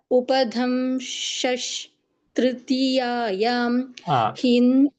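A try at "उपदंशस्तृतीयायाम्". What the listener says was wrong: एकं क्षणं There is no Mahaprana there. Upadamshastritiyayam. Upadamsha. Upadamsha. Upadamsha. It is not Upadamsha. Upadamsha.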